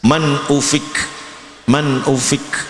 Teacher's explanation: Ada nafas keluar namanya hams